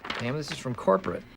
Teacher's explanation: You'll hear that the reduced words is and from have rapid schwa sounds in them. There's also a schwa in the word corporate, but that is how the word is always pronounced 100% of the time, with the schwa in the unstressed syllable.